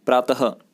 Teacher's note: जो विसर्ग होता है उसका उच्चारण जो होता है उसमें अंत में लास्ट में ह जैसी ध्वनि आती है। जैसे आप लिखेंगे प्रातः है तो प्रा त और पीछे बिंदी लगाते हैं, तो प्रात न लिख के इसको क्या बोलते हैं हम, प्रातः, ह जैसा यहाँ पे उच्चारण होता है।